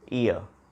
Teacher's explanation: we have two vowel sounds in the single syllable, e and a, e and a, ear